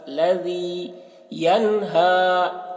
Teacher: ذال کو باریکی کے ساتھ، الذی ینہی، ینہا نون میں جلدی کریں گے کیونکہ اظہار ہو رہا ہے.